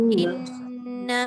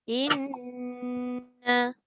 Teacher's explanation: Nun dengan nun. Satu nun mati, satu nun hidup. Jadi 2 kali. Inna. Sebab tu dia lama. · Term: dengung